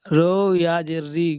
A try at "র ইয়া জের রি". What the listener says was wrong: রো নয়, র ইয়াজের রি।